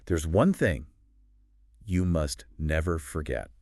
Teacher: That pause before never really hammers it home.